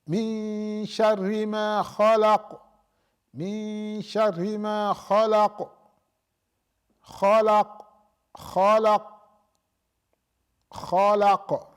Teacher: So we put a qalqala, but you can see that the sound doesn't run. It doesn't continue.